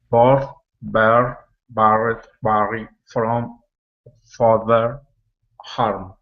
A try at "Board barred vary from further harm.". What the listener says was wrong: Well done. It sounded pretty good.